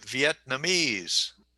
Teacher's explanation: i would say vietnamese and the accents on the fourth syllable